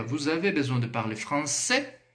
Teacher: Eu dou a entonação eu dou ênfase aí no fim da estrutura, da frase. E dessa forma ele entra como contexto de pergunta, ou seja, primeira forma, entonação.